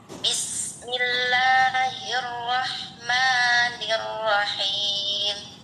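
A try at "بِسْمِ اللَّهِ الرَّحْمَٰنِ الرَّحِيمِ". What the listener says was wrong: ya, tinggal roknya aja sedikit lagi ya. Ro. Ini bibir masih bergerak enggak gitu.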